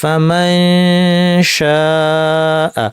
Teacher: আচ্ছা, এরপর নুন সাকিব শিন, শিন কোথায়, জিব্বার মাঝখান, শিনের কাছাকাছি আমার জিব্বা নিয়ে নাক থেকে গুন্না করতে হবে